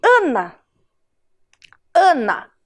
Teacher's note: o ar saiu todo pela minha boca um som oral